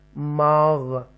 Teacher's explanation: حروف مستعالیہ میں سے غائن آیا ہے، اس کو پر پڑھیں گے ماغ. اوکے، تفخیم کے ساتھ پڑھیں گے ماغ.